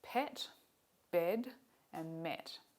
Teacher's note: we call this vowel a mid-low front unrounded vowel